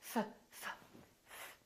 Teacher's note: F, f, f. There's no vibration in my vocal cords, so the F is actually a voiceless sound. So that means the S that follows it will also be voiceless, and we will say laughs, laughs.